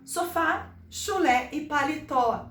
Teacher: as nossas oxítonas, as palavras que contêm ênfase na última sílaba